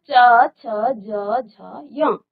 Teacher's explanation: जब च छ ज झ य आप करते हैं तो तालू को स्पर्श करता है आपकी जीभ जो है तालू को स्पर्श कहा जाता है इसलिए इसको तालू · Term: तालव्य